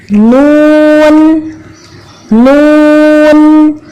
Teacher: تو نون کی مشق کرتے ہیں. محسوس کریں زبان کی نوک کو اوپر والے 2 دانتوں کے مسوڑے سے لگایا اور پھر یہاں سے ہمارے نون کی آواز نکلنا شروع ہوئی · حرف نون کے اندر بھی میم کی طرح یہ خوبی ہے کہ اس کی آواز ناک کے رستے سے باہر آتی ہے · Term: غنہ